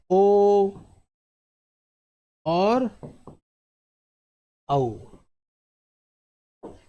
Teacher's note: कंठोष्ठ क्या हो गया जिसका उच्चारण कंठ और होठ से होता है